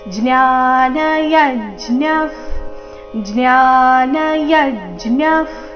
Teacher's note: ಯ ಮೇಲೆ ಆಘಾತ, ವಿಸರ್ಗ ಅರ್ಧ ಫ ರೀತಿ